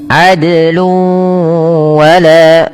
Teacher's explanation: Dal sama hukumnya dengan qaf dan jim, harus memantul. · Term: qalqalah